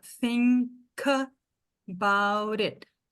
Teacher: Ele não faz essa junção. Então, ó, na hora que eu falo, esse K ficou com a próxima sílaba.